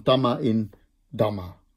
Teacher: En die zegt dat de eerste medeklinker van het tweede woord, hè, dus je hebt twee woorden naast elkaar, de beginmedeklinker van het tweede woord verandert van stemloos in stemhebbend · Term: rendaku